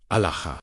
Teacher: The first syllable opens like a breath. The second rises LAH, as if calling upward toward an infinite sky. The third falls softly, ha, like the exhale that follows a moment of profound recognition.